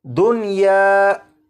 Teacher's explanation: होना तो ये चाहिए था कि नून साकिन को या में इदगाम करके पढ़ते, लेकिन इस लफ्ज़ में नून साकिन को या में इदगाम नहीं करेंगे बल्कि यहाँ पर नून साकिन को ज़ाहिर करके पढ़ेंगे